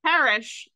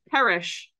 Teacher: where I grew up, “parish” like a church and “perish” like dying sound exactly alike.